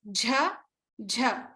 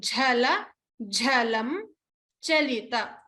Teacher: remember to pronounce the Mahaprana, or a forceful expulsion of air of the jha sound. So like jar, the English word jar. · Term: Mahaprana jha